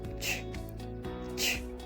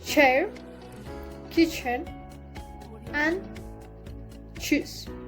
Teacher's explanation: The place of articulation is palato-alveolar.